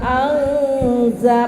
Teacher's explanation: nun sukun bertemu dengan zai, disamarkan kemudian didengungkan karena menjadi ikhfa